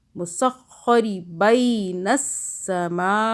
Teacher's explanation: میم الف اس کو ہم کھینچ رہے ہیں کیونکہ مدہ بڑی مدہ ہے 6 الف کے برابر